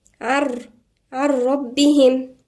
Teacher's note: الحكم الثاني اللي هو الإدغام في الحلقات السابقة، إذا بترجعوا عشان يبقى عارفين ايه هنا لما بقول هنا إدغام. زي هنا إدغام بغير غنة